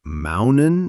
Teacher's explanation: Instead of using the tip of the tongue, we stop the air in the throat. It's like the tea gets stuck halfway. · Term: glottal stop